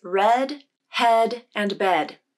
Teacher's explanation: This vowel is a lax vowel, which means there is much less muscular tension when you say this sound. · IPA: /ɛ/